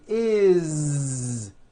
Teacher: it's always is with a voiced Z